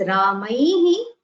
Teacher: the Visarga also has the same sound as the preceding vowel. So when it is Ramaihi, it is he.